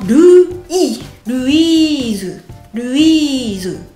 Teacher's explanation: Essayez de ne pas manger le i en une seule syllabe parce que en français Louis ça fait vraiment une syllabe.